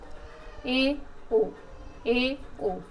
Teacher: आधा बंद रहता है, इसको क्या बोलेंगे? Half close, अर्धसंवृत